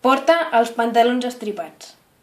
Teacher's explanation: Fixa't que la A final de porta és àtona i que la E d'als també és àtona. En aquests casos només es pronuncia una de les vocals. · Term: elisió